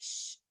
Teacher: the body of the tongue touches like the hard palate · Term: palatal